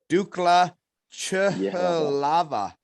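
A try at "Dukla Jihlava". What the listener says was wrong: Yehlava, yeah. Dukla Yehlava. Yeah, they yeah, so they say their J's are like a year there.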